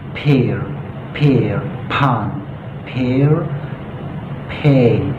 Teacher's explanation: Jadi tidak pear biasa, tapi ada ledakan, ada sedikit ledakan angin ya. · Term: bunyi plosif P